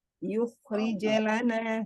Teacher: qalqalah ketika di tengah kalimat, itu dia tetap jelas, hanya saja mengalir, jangan seperti ditahan gitu ya. Contohnya tadi, yukhrij lana, tapi yukhrij la ngalir.